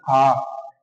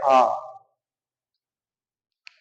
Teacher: उसमें क्या होता है हमारा मुख होता है वो पूर्ण रूप से पूरा खुल जाता है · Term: विवृत स्वर